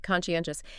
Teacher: Stress on the third syllable there